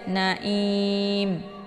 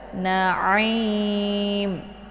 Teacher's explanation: Ain letak posisinya di tenggorokan bagian tengah. Jadi jangan dibaca naim.